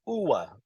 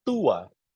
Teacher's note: U followed by A, like as if there is a W in between